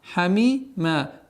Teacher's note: При остановке танвин фатха аннулируется, и в размере 2 огласовок, естественно, удлинение появляется у нас.